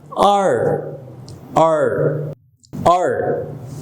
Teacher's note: আমরা যখন আর উচ্চারণ করব তখন টাং অর্থাৎ আপনার জিহ্বাটা মুখের ছাদ বা রুফকে টাচ না করে কার্ল হয়ে যাবে, অর্থাৎ বেঁকে যাবে, আর আর আর।